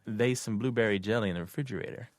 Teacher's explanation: She has the dialect pronunciation of they instead of there is or theirs.